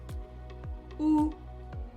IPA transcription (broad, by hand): u